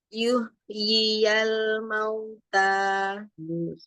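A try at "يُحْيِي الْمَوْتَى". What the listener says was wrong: Kurang rohoh ya. Jadi nih, dicontohkan. Yuhyiyal mauta. Yuhyi. Jadi hak itu kan rohoh. Jangan selesai baca haknya yang sukun sampai ketemu yi. Jadi yuhyiyal. Hembusnya jalan terus.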